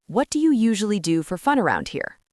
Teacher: Listen to how my voice drops on the word here.